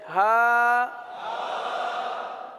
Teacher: حلق کے آخر والے حصے سے